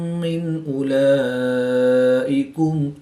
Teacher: نون ساکن کے بعد حمزہ حروف حلقی میں سے ہے تو یہاں پر اظہار ہوگا، غنہ نہیں کریں گے۔ کھڑی زبر کے بعد حمزہ اسی کلمے میں ہے تو یہاں پر مد متصل ہوگی، 3 سے 5 الف تک کھینچ کر پڑھیں گے۔